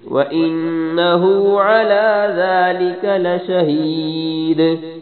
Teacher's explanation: لشہید دال کو دال پہ وقف کرنا ہے اور دال پہ کلکلا کرنا ہے